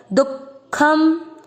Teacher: ये आप हिंदी में भी देखोगे, हिंदी में कोई विसर्ग नहीं होता, लेकिन हिंदी में भी दुख ऐसे ही लिखा जाता है, दू के बाद में दो बिंदी एंड देन ख। तो इसीलिए कोई विसर्ग नहीं है, दू के बाद में आघात देना पड़ता, दुखम। इस चीज को क्लियर रखिएगा कि दु के बाद में विसर्ग नहीं है, हिंदी में भी दुख ऐसे ही लिखा जाता है।